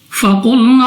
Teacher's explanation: قوف مستعلی میں سے ہے، موٹا پڑھیں گے